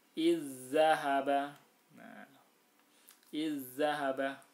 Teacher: Za sukun bertemu dengan za, maka cara bacanya itu ditasdidkan. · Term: idgham mutamatsilan